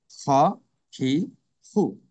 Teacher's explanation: কণ্ঠনালী বা হলকের শেষ হইতে উচ্চারণ হয়।